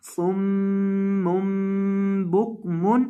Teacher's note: صاد کو موٹا کرنا ہے میم کے اوپر گنا کرنا ہے اور یہاں آخر پہ یہ جو چھوٹی میم ہے یہاں بھی گنا کرنا ہے صم بکم.